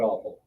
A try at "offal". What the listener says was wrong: A lot of people pronounce it as awful, but it's offal.